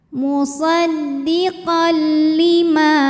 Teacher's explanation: Kemudian ada hukum idgham bila gunnah karena ada tanwin fathah yang menghadapi huruf lam, maka tanwinnya dileburkan ke lam musaddiqal tanpa disertai dengungan, jadi cukup ditekan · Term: idgam Bil ghunah